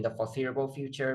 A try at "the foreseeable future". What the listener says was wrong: I would just say there's a problem with sentence stress there. The foreseeable future. Stress should be on future. In the foreseeable future, or for the foreseeable future. Not for the foreseeable future, but the foreseeable future.